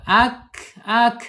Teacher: kaf ini mempunyai sifat hames. Ketika sukun ya ak ya sifat itu sukun ak jadi mengalir dia tidak boleh di ee pentok kan ya.